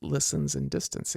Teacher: So the rhyme falls on the last syllable, which in this case is unstressed. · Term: feminine rhyme, feminine rhymes